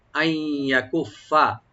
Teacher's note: আইয়াকুফা এখানে নুন সাকিনের পরে ইয়ার সেখানে ইদগাম উইথ গুন্না হবে।